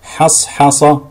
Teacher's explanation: عدم تفخيم حرف الحاء في مثل حصحص، فلا نقول حصحص أو أحط، لا، فلا نقول أحط الحق، فلا نقول الحق نظرا لمجاورتها لحرف مستعل بعدها.